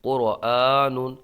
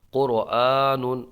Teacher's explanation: ایک الف کھینچ کے پڑھیں گے حمزہ کو اس لیے کہ اس کے اوپر کھڑا زبر ہے